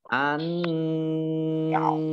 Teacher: Nun tasdid dibaca gunnah.